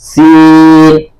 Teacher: اخیر میں لاسٹ میں نون کی آواز آنی چاہیے جب سین پورا ہوگا